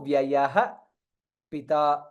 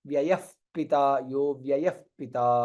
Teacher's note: ವಿಸರ್ಗ followed by ಪಕಾರ hence it is ವ್ಯಯ ಪಿತಾ